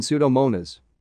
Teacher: Only the S sound in PS is pronounced, as in Pseudomonas.